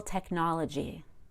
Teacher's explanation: Technology has a dark L because the vowel after the L is unstressed. In practice, using the tongue tip to make this L is optional.